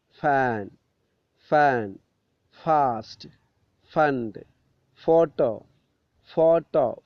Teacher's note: ഫ് ഫ് എന്ന് ഉച്ചരിക്കുന്ന സമയത്ത് ഫ് നമ്മളുടെ താഴെ ചുണ്ട് മുകളിലെ പല്ലിൽ കൊണ്ടുപോയി വെച്ചിട്ട് ആണ് ഉച്ചരിക്കുന്നത്. ഫ് ഫ് താഴെ ചുണ്ട് മുകളിലെ പല്ലിൽ.